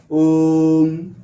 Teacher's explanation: ओ को हम तीन गुना अधिक खींचेंगे उच्चारण करने में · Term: प्लुत स्वर